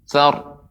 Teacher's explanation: Kemudian juga catatan ya tentang surat ini agar lebih diperhatikan, yaitu ra yang berada di akhir. Ra yang berada di akhir ketika waqaf maka dibaca dengan tebal, ya, tafkhim.